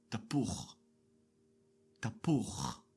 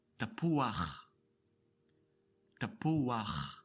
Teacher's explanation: Notice the added a before the last chet. Tapuach. The patach is decorating the last letter, but we don't say tapucha as expected. · the Hebrew language adds an a sound before the last guttural consonant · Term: Patach Gnuva, patach gnuva